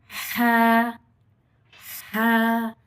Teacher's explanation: हलक के दरमियानी हिस्से से